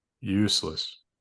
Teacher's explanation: I think that's actually my back vowel unrounded high back